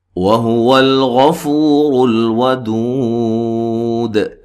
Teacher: یہاں لام کو ہلانا نہیں ہے، غین کو موٹا ادا کرنا ہے، فو و مدہ ہے، اور را کو موٹا ادا کریں گے، ودو دو و مدہ ہے، وقفن قلقلہ اور مد کے ساتھ وقف کر سکتے ہیں۔